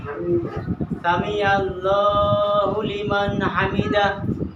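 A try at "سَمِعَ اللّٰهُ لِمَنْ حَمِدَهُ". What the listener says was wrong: আইনটাকে একটু ডাবাই বলেন তো।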